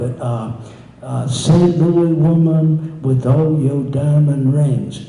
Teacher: every other syllable is accent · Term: iambic line